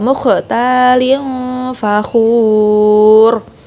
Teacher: Jangan cuma 2 harokat, melainkan panjang 6 harokat mat arid di sukun